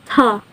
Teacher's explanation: voiceless alveolar plosive